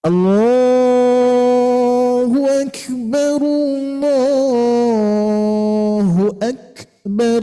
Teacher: untuk pengucapan Kaf ketika sukun itu syidah dulu baru hams